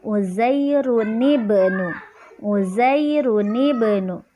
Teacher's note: Nanti di tengah-tengahnya menjadi ni atau nun wiqayah ya. Di sini Uzairunib ada dhammatain bertemu dengan hamzah wasal.